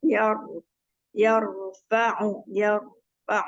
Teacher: Coba sekarang rnya rnya tebalkan